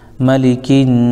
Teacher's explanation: یہاں پہ نون پر تشدید ہے تو غنہ کریں گے ایک الف